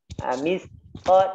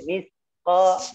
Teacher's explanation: hati-hati juga terlalu banyak mengeluarkan nafasnya. Dia nanti jadi huruf sin. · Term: hamas